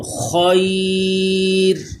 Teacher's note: قم فانذر خیرن، آگے وقف، یہ جو گول دائرہ ہے یہ آیت کی نشانی ہے تو اس کو وقف کہتے ہیں۔ جب وقف کی حالت میں پڑھیں گے تو خیر، یہ را بھی پر رہے گا